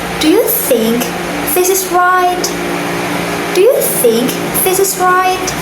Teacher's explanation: So my voice goes up at the end. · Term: rising intonation